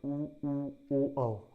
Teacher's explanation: तो जिसमें ओठ गोल हो जाए बोलने में वो वृत्ताकार और जिसमें ना हो उसमें अवृत्ताकार तो स्वर देखोगे तो उसमें तो उ औ इसमें हमारे होठ गोल होते हैं